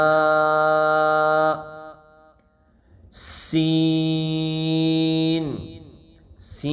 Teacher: سین کو ہم سیٹی کی آواز سے پڑھیں گے